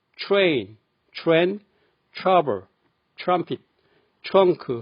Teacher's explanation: TR 발음은 트보다는 추 소리가 납니다.